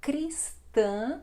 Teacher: nasal também este A final